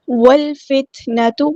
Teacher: کے ساتھ ملا دینا، حمزۃ الوصل ہمارا ڈراپ ہو جائے گا، لام یہاں پہ لام قمریہ ہے تو ہم ظاہر کریں گے ، تا ساکن ہے تو ہم اس کی صرف شو ہوگی،